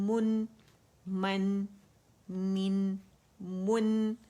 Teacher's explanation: اچھا فتحہ کے لیے کیونکہ جبڑا ایک کاؤنٹ کے لیے کھلتا ہے ہمارا, آواز اوپر جاتی ہے تو اوپر سے آواز نون ساکن پہ جائے گی. نون کا مخرج جو اس میں قلقلہ نہیں کرنا, اس پہ ٹک جانا ہے اور اس کو باریکی سے ادا کرنا ہے